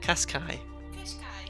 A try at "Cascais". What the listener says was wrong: It's not the car, it's Cascais. You're saying like Nissan Qashqai or something.